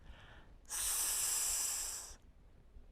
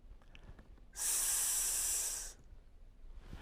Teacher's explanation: The sound S is voiceless. You don't use your voice to say this sound.